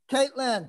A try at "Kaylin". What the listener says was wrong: Kaylin, no T.